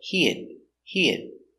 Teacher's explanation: you can pronounce it he had or he he you don't hear the H